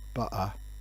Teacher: in some colloquial forms of english people use glottal stops in place of a t